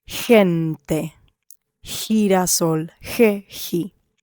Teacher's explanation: What happens if you remove the U, then the G becomes hard and it is like a hard H.